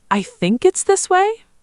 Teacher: said with a slight rise, showing gentle uncertainty · using a rising tone at the very end of a statement to show uncertainty or to gently invite agreement